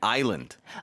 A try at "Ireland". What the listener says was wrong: Ireland. Like you have to hit the hard R. Ireland.